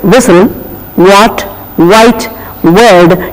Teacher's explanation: there is no touching of the lip or the teeth but it's the lip rounding